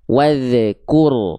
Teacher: zal sukunnya ada bunyi tambahan berupa wadh. Jadinya mantul.